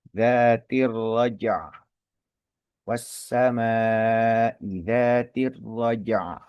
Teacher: karena waqaf maka kasrahnya huruf ain ini berubah menjadi sukun karena sebab wakaf